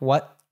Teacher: So we have what there has a glottal T at the end. So it's like what, as if you're cutting it off at the back of your throat